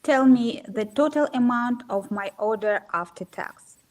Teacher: this is a yes/no question, so do the rising intonation